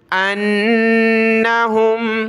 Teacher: حمزہ کو نون کے ساتھ ملایا، غنہ کریں گے